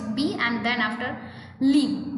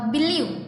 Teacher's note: the word believe has two syllables, that is first is B and then after leave, but only the second syllable is stressed. Like આપણે જ્યારે બોલીએ બિલીવ તો આપણે બી ઉપર એટલો સ્ટ્રેસ નથી મૂકતા અને એની જગ્યાએ લીવ જે લાસ્ટનું જે સ્પેલિંગ છે એની ઉપર મૂકીએ છીએ. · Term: word stress